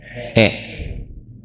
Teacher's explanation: Memiringkan bacaan antara fathah dan kasrah. Antara a dan i. Jadi bunyi e e. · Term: imalah